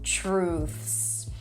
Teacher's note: you start with a ch sound, then an r tr long ooh as in food. True, and then ths together.